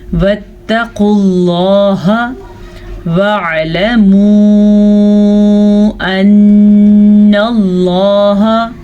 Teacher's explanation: لفظ اللہ کو ہم پر پڑھیں گے اور قاف کو بھی پر پڑھیں گے. قاف ہمیشہ ہی پر پڑھا جاتا ہے.